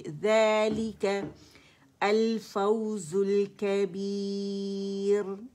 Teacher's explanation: ये अलिफ सगीरा ज़ाल की आवाज़ को खींच रही है, ठीक है, 2 काउंट्स के लिए आवाज़ ऊपर जाएगी